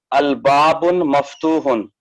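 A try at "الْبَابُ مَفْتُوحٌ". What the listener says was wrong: आप कहाँ गलती कर रहे हैं, आपको पता है? जी, अलिफ लाम लगने की वजह से वहाँ तनवीन चला जाता है उसका।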